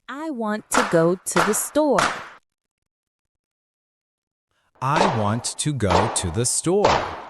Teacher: In this sentence, there are only 3 strong beats. Want, go, store. The other words are reduced. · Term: English rhythm